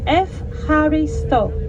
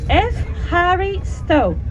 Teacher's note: the combination of the epsilon and the upsilon is an F or Ev sound in Greek